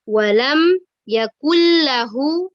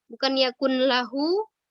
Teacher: nun sukunnya itu dileburkan ke huruf lam ya, dileburkan ke huruf lam sehingga tidak didengung.